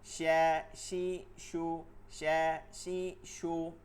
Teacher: শিন জিব্বার মধ্যখান থেকে তালুতে